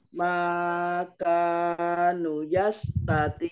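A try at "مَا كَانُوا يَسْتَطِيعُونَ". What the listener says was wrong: kanu nunya panjang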